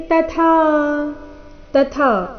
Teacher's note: ಇಲ್ಲಿ ಮೊದಲು ತ ಅಲ್ಪಪ್ರಾಣ ನಂತರ ಥ ಮಹಾಪ್ರಾಣ ದೀರ್ಘ